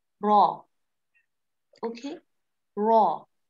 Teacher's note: Raw comes out from the edge of the tongue and the part of roots of the teeth towards the palate.